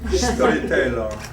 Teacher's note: Empeza con un S líquido que soa entre os dentes. Non é esa cousa africada do teu inglés que o ápice da lingua toca levemente os alveolos.